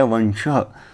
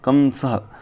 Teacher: अलाम्बुबीणा के समान दंतमूल से जो स्वर उत्पन्न होगा, वैसा इन अनुस्वार का उच्चारण यहाँ पर किया जाएगा